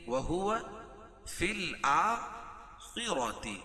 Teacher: خا کو پر پڑھیں گے کیوں؟ خا حروف مستعلیہ میں سے را بھی پر پڑھی جائے گی کیوں؟